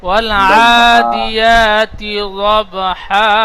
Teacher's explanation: দুব নই, দব, দদ বাজ যাবার দব, আর দুব বললে দদের উপরে পেশ হয়ে যাচ্ছে।